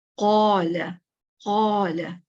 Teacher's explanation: قو سب سے زیادہ heavy sound ہوتی ہے، یعنی سننے میں آپ کو سب سے زیادہ موٹی آواز آئے گی